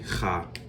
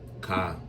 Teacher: Ha, which this is a guttural sound. It doesn't sound like Ka.